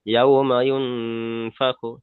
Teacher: নুন সাকিনের আওয়াজকে নাকে তুলে একালি পরিমাণ গণ্য করে পড়তে হবে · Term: ইকফার